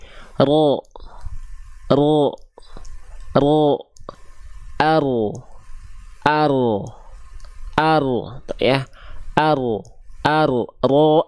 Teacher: huruf ro itu dilafalkan bukan dari ujungnya banget di sini tapi huruf ro itu dilafalkan dari punggung lidah